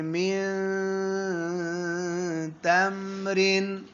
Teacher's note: زبان کی نوک مسوڑوں پر تھوڑی تھوڑی لگے گی اور تھوڑی تھوڑی نہیں لگے گی اور ساتھ آواز ناک میں جائے گی. ناک میں لے جا کر لمبا کرنا ہے. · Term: اخفا